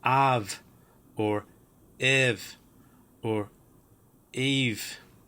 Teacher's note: the biggest rule here is that the upsilon forms a V or an F sound